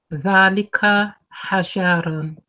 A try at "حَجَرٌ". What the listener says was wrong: Okay, you're elongating the word still. So you're saying hajarun.